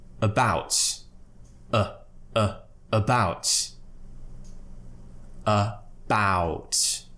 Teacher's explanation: the second syllable is going to be stressed because the schwa is at the beginning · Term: schwa sound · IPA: /ə/